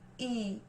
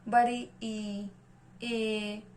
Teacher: जीभ का अग्रभाग ऊपर उठता है। जैसे ई, तो जीभ का जो अग्रभाग है वो ऊपर उठता है हल्का सा। बड़ी ई, ए। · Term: अग्रस्वर